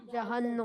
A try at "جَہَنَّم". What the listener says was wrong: جہنم نہیں, جہنم. یہ بھی ہمارے یہاں بعض لوگ غلطی کرتے ہیں, جہنم اس کو پڑھ رہے ہوتے ہیں, نون کے اوپر پیش نہیں ہے, زبر ہے.